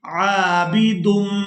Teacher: میم مشدد پر غنہ کریں گے